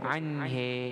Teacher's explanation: Dalam riwayat lain, qiraat lain dia ada baca anhe. Itu namanya imalah.